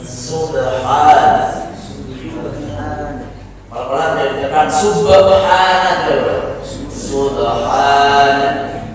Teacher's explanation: tidak hames, tidak mengeluarkan nafas